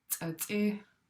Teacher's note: It should be low, short and then high e.